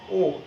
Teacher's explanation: এবং অধ্বনির উচ্চারণের সময় ঠোঁটের অবস্থান আমরা দেখেছি যে যখন বিবৃত উচ্চারণ হয় তখন কিন্তু চোয়াল অর্থাৎ এই যে দুই পাটি দাঁত অ একটু কিন্তু প্রসারিত হয় এবং ঠোঁটটি সমান্তরাল থাকে। যখন ও উচ্চারণ হয় অর্থাৎ সংবৃত উচ্চারণ হয় ও, তখন কিন্তু ঠোঁটটি একটু গোলাকৃতি থাকে